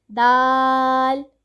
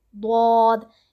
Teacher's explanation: ہم نے دال کو باریک پڑھنا ہے، ضاد کو ہم نے پر پڑھنا ہے